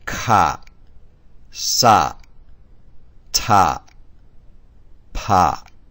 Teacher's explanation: all pronounced with aspiration you may remember the definition of aspiration the speaker breathes out heavily through the mouth while pronouncing these consonants